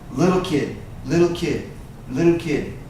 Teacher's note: I was a little kid and these two T's right here when you say it fast you don't hear the t's